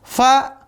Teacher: Yang kelima, fa, yang pertama, ujung gigi seri atas dengan bibir